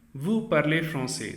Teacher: L'intonation, by using a rising intonation.